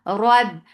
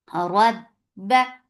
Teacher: Rab, ra is heavy for fatha upon your jaws attached. Ba will get sifa of shidda. There is no flow of sound.